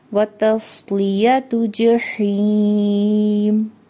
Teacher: ता को बारीक पढ़ना है क्योंकि ये 2 नुक्तों वाला ता है। स्वाद को मोटा पढ़ना है क्योंकि ये हैवी लेटर है, और लाम को बारीक पढ़ना है। · जीम के ऊपर एक हरकत है, इसको लंबा नहीं करेंगे। हा ज़ेर या ही, 2 हरकत लंबा करेंगे।